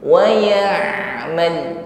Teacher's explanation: tawassut pada huruf ain, alirkan sebagian bunyi huruf ain. Wa ya'mal, jangan tertahan.